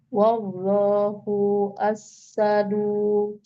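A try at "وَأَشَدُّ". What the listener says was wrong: Ba'sau wa asyaddu. asyaddu. Tasdidnya dan ya. Jangan menutup tasdid ya. Asyaddu.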